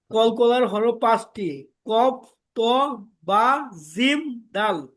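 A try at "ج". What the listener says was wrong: জিমটাকে ভাই শক্ত করতে হবে মাশাল্লাহ ঠিক আছে এমনি সুন্দর হইছে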